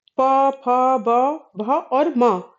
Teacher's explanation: ये प फ ब म का उच्चारण करते समय दोनों ओठ जो है वो एक दूसरे को स्पर्श कर रहे हैं। जिससे इन ध्वनियों का उच्चारण हो रहा है। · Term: ओष्ठय